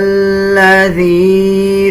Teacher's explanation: ذال اور یا کو ملاتے ہوئے 1 سیکنڈ لمبا کیا جائے گا